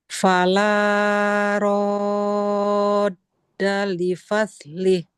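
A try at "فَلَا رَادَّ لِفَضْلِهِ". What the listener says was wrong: Nah, panjang la-nya di ayun. Fala. Kemudian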